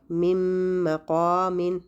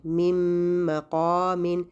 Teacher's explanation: ٹھیک ہے، من کا جو نون تھا وہ مکمل طور پر مدغم ہو گیا ہے اور غائب ہو چکا ہے، اس کا مخرج بھی نہیں بچا اور صفات بھی نہیں بچی. تو یہ جو غنہ آپ کو سنائی دے رہا ہے یہ اس نون کا نہیں ہے بلکہ میم کا ہے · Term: ادغام کامل